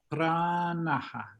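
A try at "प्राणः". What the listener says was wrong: Now you're getting N sound. Let's try again. So this N should come from the roof of the mouth. Na. Pranaha.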